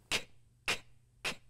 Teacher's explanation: The back of the tongue quickly rises up to touch the back of the roof of our mouth, blocking the air for a bit before the tongue comes down and lets it out.